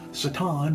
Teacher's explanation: Satan is standard Hebrew pronunciation, putting the emphasis on the last syllable